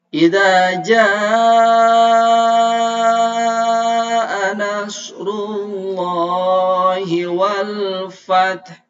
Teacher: hukumnya adalah Mad Thobi'i panjangnya dua harkat bacanya agak panjang